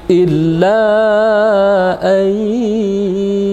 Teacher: Jadi ayyu kita tahan selama 2 harakat. Karena dia idgham bi gunnah.